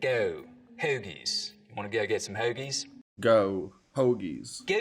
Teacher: Now, another thing that starts to happen as we get down towards Philly is that the goat diphthong starts to move forwards in the mouth